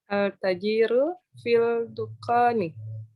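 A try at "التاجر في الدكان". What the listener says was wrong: At-tajiru fid dukani. Jadi aslinya ad-dukanu, karena ada fi menjadi fid dukani.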